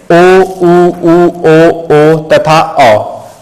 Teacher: जिन स्वरों के उच्चारण में जीभ का पिछला भाग सामान्य स्थिति से उठता है, पश्च स्वर कहे जाते हैं। ठीक है, यानी कि जिसमें अब मेरी जीभ का पीछे वाला भाग, जब मैं कुछ भी बोलूंगा, उच्चारण करूंगा, तो मेरी जीभ का जो पीछे वाला भाग है वो वर्क करेगा, वो काम करेगा।